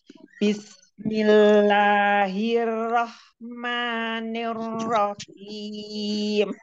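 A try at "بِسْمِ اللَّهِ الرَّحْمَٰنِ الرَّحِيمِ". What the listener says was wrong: Bismillahirrahmanirrahim. Jangan seperti ada ini ya, ada putus. Bismillahirrahmanirrahim. Nyambung.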